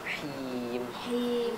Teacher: Jadi kasroh sempurna dengan menurunkan rahang bawah. Bunyinya seperti i, bukan e atau e, ya.